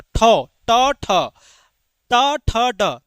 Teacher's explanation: तो ट ठ ड ढ ये सभी मूर्धा से निकलता है